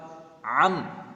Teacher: عین جو ہے حلق کے درمیان سے ادا ہوتی ہے